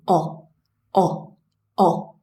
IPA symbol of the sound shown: ɒ